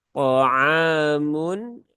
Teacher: Ain dia di tengah tenggorokan tipis. Ada alif setelah fathah, maka ainnya terbaca dua harokat.